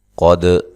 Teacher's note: قاف کو موٹا ادا کرنا ہے، یہ موٹے حروف میں سے ہے۔ دال پہ قلقلہ کرنا ہے، دال کو ہلا کر پڑھنا ہے